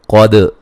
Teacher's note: قاف کو موٹا ادا کریں گے، دال کو ہلا کے پڑھیں گے